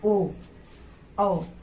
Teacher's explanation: गले का और होंठ का दोनों का प्रयोग हो रहा है, जिसमें कि ओ आ जाता है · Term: कंठोष्ठ